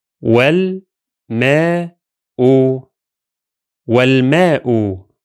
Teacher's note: The first one will be والماء, where only the hamza of the definite article becomes silent